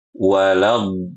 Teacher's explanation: Kalau kita baca walad, nah ini benar makhrajnya, yaitu kita menggunakan sisi lidah, ya, sebagaimana makhrajnya huruf dhad